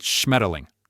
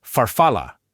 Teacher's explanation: Almost every single syllable ends in a vowel, which creates this open and flowing sound with no harsh, abrupt stops.